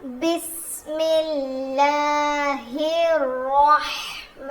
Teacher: ہا کو رو سے ملائیں گے اور رو کو موٹا پڑھیں گے، ہا کے ساتھ ملائیں گے، ہا کی آواز حلق سے